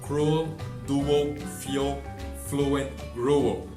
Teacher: que é o som de U com o schwa, que é esse E de ponta cabeça